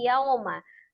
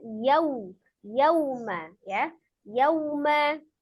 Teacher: Jadi waw sukunnya harus dia jelas bunyi u ya, dengan menyempurnakan memonyongkan kedua bibir. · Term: madlin